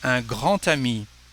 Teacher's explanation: The letter D becomes a T, a great friend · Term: liaison